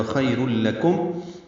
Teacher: خیر میں خوا پر لین، خیر نہیں پڑھنا، خی پڑھنا، را پر پڑھیں گے اور لام سے ملا دیں گے، ادغام کامل ہو جائے گا